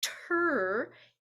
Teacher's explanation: it starts with the same front of the tongue behind the teeth and then quickly goes back into the back of the tongue